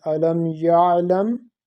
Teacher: we have to pronounce it without a pause, without certain pause, but we have to pronounce and make the sound of ayn there